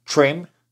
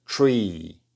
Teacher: observen la diferencia entre esta I corta trim y esta I larga Tree